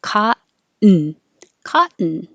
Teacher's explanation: And 44, cotton. It's the vowel is ah, so you have to open more. Cotton, cotton.